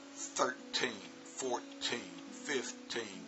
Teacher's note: But if it ends in a teen, like if I say 13, 14, 15, it's real obvious that the stress is on the teen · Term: word stress